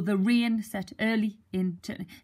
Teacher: The meter is iambic tetrameter, so that is 8 syllables per line, and the stress is on the second syllable.